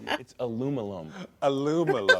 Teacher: They really do skip out on the second I in North America.